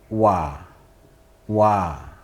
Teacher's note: ternyata nafasnya tidak boleh berhembus keluar jadi cukup berada di dalam